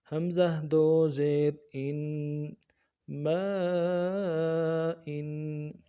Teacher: حمزہ دو زیر ان، ان۔ حمزہ کو نرم سے پڑھیں گے، تنوین کو غنے کے ساتھ ایک الف مدار میں کھینچیں گے۔